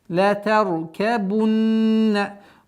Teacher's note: Назализация, удержание в размере двух огласовок.